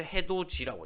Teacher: 자, 이 디귿과 이가 만났죠. 그럼 이게 지읒이 되는 거죠. 그래서 해돋이라고 되는 겁니다.